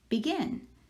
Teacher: So the second syllable is the one we are stressing or accenting. And I'm going to put an accent over that second part of the word.